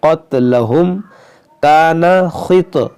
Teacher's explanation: یہ قاف موٹا پڑھیں گے